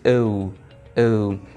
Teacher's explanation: It is a glide from the O sound to the U sound, so it becomes O, O. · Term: O diphthong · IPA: /oʊ/